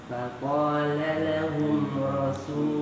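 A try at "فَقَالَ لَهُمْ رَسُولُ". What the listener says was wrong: Nah, rasu. Rasu. Jadi ra su. Nah, gitu. Wis dilatih lagi nanti. Tadi masih kurang situnya ya.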